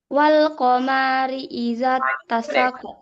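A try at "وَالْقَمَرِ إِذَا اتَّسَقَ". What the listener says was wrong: Maknya pendek. Wal qamari, maknya pendek.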